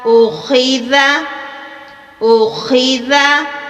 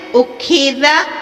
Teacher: یہ کھا نہیں ہے، یہ خا ہے، حلق سے ادا ہونے والا حروف ہے۔ خا اور غین یہ بھی ایک ہی جگہ سے ادا ہوتے ہیں۔